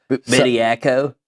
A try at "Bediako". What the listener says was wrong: No, I prefer you say it right. Bediako. It's not Bajako. There's no J in there.